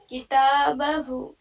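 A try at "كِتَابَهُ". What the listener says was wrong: کتابہ، ہا الٹا پیش ہو ہے یہاں پہ.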